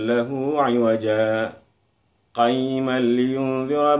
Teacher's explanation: Jadi berhenti sejenak tapi tidak ngambil nafas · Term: saktah